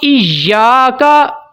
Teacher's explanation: या के ऊपर तशदीद है, या के ऊपर शद है, इसको ज़रा दबा के अच्छे से पढ़ना है